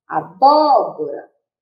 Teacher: proparoxítona quando a antepenúltima sílaba é a sílaba tônica é a sílaba mais forte